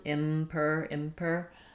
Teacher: we just close to the M and release into the P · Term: bilabial sounds